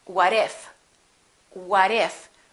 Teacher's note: when the t is between two vowels it becomes a fast d